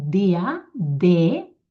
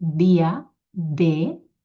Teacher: La D del català és dental i es pot fer de dues maneres, o bé tocant les dents de dalt, dia, de, o bé entremig de les dents